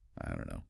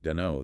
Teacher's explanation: the vowel sound in don't the o sound often weakens maybe becomes a bit shorter or less distinct especially when spoken quickly